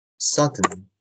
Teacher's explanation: 근데 이 DN에는 모음이 없죠. 근데 이 N이 모음 역할을 하는 거예요. 그래서 sudden 왜냐하면은 N이 nasal 사운드니까 공명성이 크니까 결국 모음의 역할을 자음의 모음의 역할을 할 수 있다라고 보기 때문입니다.